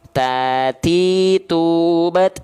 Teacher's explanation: maksudnya Seperti apa tuh Bang oke begini Perhatikan baik-baik ya nih huruf ta itu dilafalkan ujung lidah kita disentuhkan ke Pangkal gigi serih atas sama seperti Huruf Dal sama tuh ya Tati tuat